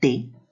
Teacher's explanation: vemos que es oclusivo, o sea, corta el paso del aire, ¿no? Es dental.